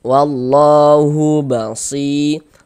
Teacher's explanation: Jika sebelum ya sukun ada ini nih ada harakat kasrah baris satu di bawah huruf harakat kasrah ada huruf ya sukun sebelumnya harakat kasrah maka huruf yang memiliki harakat kasrah dibaca panjang sehingganya si kita baca panjang